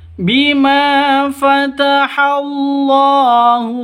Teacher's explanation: Bima panjang dua ketukan ma. Karena ada alif diawali dengan fathah atau alif sebelumnya berharakat fathah. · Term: Mad asli